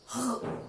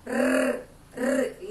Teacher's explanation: Já o fraco, R, R, língua treme quando a gente pronuncia ele